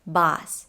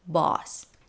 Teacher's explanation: pronounced with a short O sound, ah, boss. Another way of saying it is with aw sound